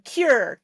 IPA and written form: kjʊr (curiosity)